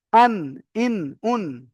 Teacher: তো ঠিক ওই রকম নুনটাও আন, ইন, উন, তো এখানে জিভের আগা তার বরাবর উপরের তালুর সাথে লাগিয়ে উচ্চারিত হয়